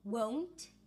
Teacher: When you say with a W sound, rounded lips, a long diphthong